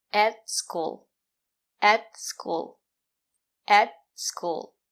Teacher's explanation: At is not stressed, we pronounce it as et. The sound is more closed. And the letter T is a stop T. · The sound is more closed. And the letter T is a stop T. Put your tongue up and stop the air.